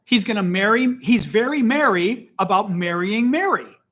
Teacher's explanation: I will show you 3 words. In Illinois, where I'm from, these words are pronounced the same.